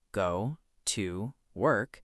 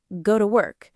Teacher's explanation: But, naturally, we say something more like go to work, where to becomes a very quick, relaxed sound, almost like ta. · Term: weak forms